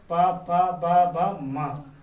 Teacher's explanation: दोनों ओठों से मिलकर ये वर्ण बोले जाते हैं, इनको कहते हैं ओष्ठ ध्वनि